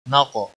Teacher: قاف پر قلقلہ بھی ہوگا اور قاف موٹا بھی پڑھا جائے گا۔ وقف کی صورت میں یہاں پر بھی تنوین بدل کر 1 زبر کے ساتھ حروف مدہ بن گیا، حروف مد کے ساتھ وقف ہوگا۔